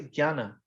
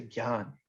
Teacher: most of the modern languages the newer languages drop the a